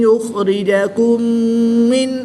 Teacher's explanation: میم ساکن کے بعد دوسری میم ہے تو یہاں پر ادغام شفوی ہوگا، یہاں پر بھی غنہ کر کے پڑھیں گے